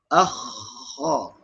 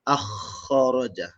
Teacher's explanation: Tak boleh bunyi kha, hilang bunyi tak boleh. Dia kena kekalkan bunyi kahak tu 2 second lebih kurang.